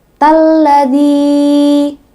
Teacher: Nah, yang berikutnya ladzi, zi itu mad tabi'i karena ada huruf kasrah bertemu dengan ya mati, yaitu za, zi ya, zi bertemu dengan ya mati. Panjangnya dua harokat atau dua ketukan.